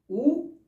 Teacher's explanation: और देखिए होठ इसमें कैसे हो जाते हैं, हमारे वृत्ताकार हो जाते हैं